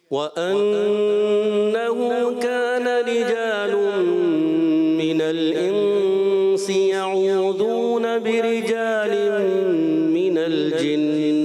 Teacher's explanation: اس میں دونوں میں جو رجال کا الف ہے نا آپ نے تھوڑا ایکسٹرا کیا